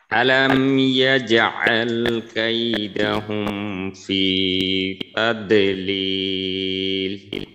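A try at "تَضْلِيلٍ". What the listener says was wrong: হ্যাঁ, দদে কিন্তু একটু কলকলার মতো হয়ে গেল, কলকলার মতো করা যাবে না, অর্থাৎ আওয়াজটা প্রতিধ্বনিত হবে না। তাও একবারে তাদলিল, দদের উচ্চারণটা একবার হবে তাদলিল, তাদলিল,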